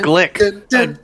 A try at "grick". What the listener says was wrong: There's an R there.